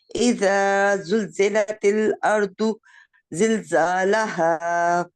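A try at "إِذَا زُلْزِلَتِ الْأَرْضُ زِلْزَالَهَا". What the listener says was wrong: अर्दू पे हम रुकेंगे। इसमें पॉज नहीं करना बिल्कुल। इज़ा पहले देखे, इज़ा ज़ुलज़िलतिल अर्दु ज़िलज़ालहा। इज़ा इज़ा क्या के, इज़ा ज़ुलज़िलतिल अर्दु ज़िलज़ालहा। इकट्ठा करना है। अगर किसी वजह से आप दौद के ऊपर रुक रहे हैं तो वो फिर असूल के साथ रुकेंगे।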